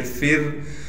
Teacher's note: फा को रा से मिलाएंगे, फा रा ज़ेर फिर। रा साकिन से पहले फा के नीचे ज़ेर है लिहाजा रा को बारीक करके पढ़ेंगे